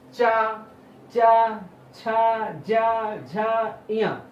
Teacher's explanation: तो इस जीभ को ले जाके आप तालु पे टच करते हैं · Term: तालव्य